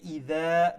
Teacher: make sure you stretch it to one alif long because of the alif madda